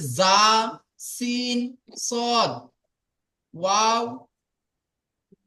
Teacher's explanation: জীবের আগা সামনের উপরের দুই দাঁতের আগা সামনের নিচের দুই দাঁতের আগাতে লাগিয়ে উচ্চারিত হবে